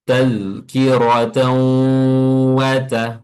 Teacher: menambahkan suara hidung pada tasdidnya huruf wau · menghilangkan tanwin dan memasukkan ke waw. Lalu unsur yang kedua adalah eh, menambahkan suara hidung pada tasdidnya huruf waw. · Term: ghunah, idgham bi gunnah